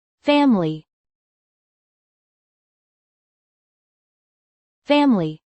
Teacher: It is often pronounced with one less syllable.